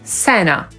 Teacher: niektórzy Amerykanie wcale nie mówią Santa /ˈsæntə/, tylko /ˈsænə/.